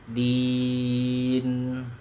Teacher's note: Di dulu panjang yang jelas, baru nanti nunnya gunnah.